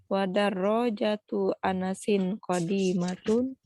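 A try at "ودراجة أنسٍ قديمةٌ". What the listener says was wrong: Bukan pertanyaan, Bu. Ini bukan pertanyaan. Coba ulangi.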